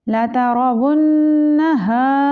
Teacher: रॉ को पुर पढ़ेंगे क्योंकि रॉ के ऊपर ज़बर है। वुन, मुशद्दद नून है तो नून पे हम गुन्ना करेंगे।